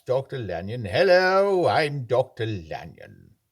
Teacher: he's got his light tightness in the middle of the mouth there very tight lips and he's a little bit old he's got a little bit of the creaky voice going on but not too much